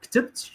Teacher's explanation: in the word ktibt, you see that the vowel schwa is the epenthetic vowel used here